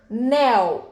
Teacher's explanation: Ela fala assim, oxítona, anel. Vejam, qual é a sílaba tônica de anel? Nel. Portanto, anel é uma oxítona, certo?